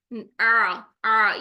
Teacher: आइन का मखरज ठीक करना है वस्त हल्क में लेके जाना है रगड़ खाते हुए उसकी साउंड आनी चाहिए